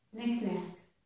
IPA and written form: nɪk næk (knick-knack)